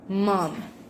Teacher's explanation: With manner of articulation, nasal, and place of articulation, bilabial.